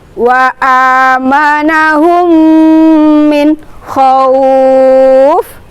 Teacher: memasukkan suara mim sukun ke dalam huruf mim berharokat. Kemudian dengan cara dibaca mendengung selama 2-2,5 ketukan. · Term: idgham mimi